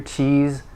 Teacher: uh cheese and the um the the word ends in this so it's just like an s but with vocal vibration